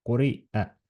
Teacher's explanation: ta on nagu selline kurgupaus, et me justkui paneks korraks selle õhuvoolu endal kinni, niimoodi kui me hääldame ja siis laseme selle jälle lahti, et quri'a ja laseme selle lahti, õhuvoolu lahti selle vokaaliga siis, mis meie selle hamza juures on.